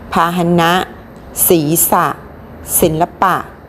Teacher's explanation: ก็จะออกเสียงอ่ะเต็มเสียงที่พยางค์หลัง นะคะต่อไปเรามาดูคำที่ไม่ประวิสรรชนีย์กันบ้างนะคะคำที่ไม่ประวิสรรชนีย์ก็คือคำที่ประสมกับสระอะแต่ไม่มีรูปสระอะเวลาอ่านออกเสียงสระอะจะออกเสียงอะแค่กึ่งเสียงนะคะมาทำที่ไม่ประวิสรรชนีย์ก็จะมีด้วยกันอยู่2แบบนะคะแบบที่1ออกเสียงอะกึ่งเสียงที่พยางค์หน้าแบบที่2ออกเสียงอะกึ่งเสียงระหว่างคำทางนี้เราลองมาดูตัวอย่างคำที่